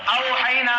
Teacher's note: औहैना में आप देखें कि औ में आपके औ में जब आप वाव अदा कर रहे हैं तो आवाज कहाँ से आ रही, औ में जुबान आपकी वाव के जगह पर कहीं पर लगती नहीं है, बल्कि ये हर्फ हवा से अदा होता है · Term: हुरूफे हवाइया